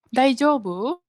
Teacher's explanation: you make it sound like it is a question so basically basically you just end the sentence with a rising intonation